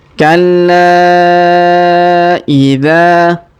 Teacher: huruf dha kita panjangkan 2 harokat karena alif di depannya